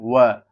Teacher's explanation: मूर्धन में नहीं ये दंतोष्ठ होता है। दंतोष्ठ मतलब जो दांत और होठों से मतलब के संपर्क से जो ध्वनि निकलती है वो वर्ण है।